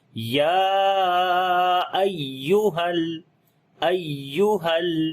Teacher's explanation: ٹھیک ہے, تو یہ دو الگ جو ہیں وہ لفظ ہیں. ایہا یا کے اوپر شد ہے, تو یہاں پر ہم نے نبر کرنا ہے, یعنی آواز کو اونچا کرنا ہے باقی حروف کی نسبت